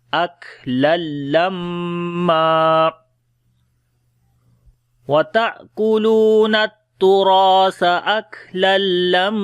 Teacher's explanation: तनवीन के बाद लाम आ गया, इदगाम बगैर गुन्ने के करेंगे और मीम के ऊपर शद है, गुन्ना करेंगे, और जब यहाँ पर रुकेंगे तो फिर दो ज़बर में से एक ज़बर ख़त्म कर देंगे और एक ज़बर यहाँ पर पढ़ेंगे।